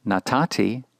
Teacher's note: when the third radical is either nun or Tav this consonant whether nun or Tav assimilates with the ensuing Tav of the ending